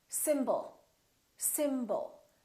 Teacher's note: We have two syllables. The first syllable is stressed, and the second syllable is reduced. When we have a reduced vowel, we don't pronounce it fully.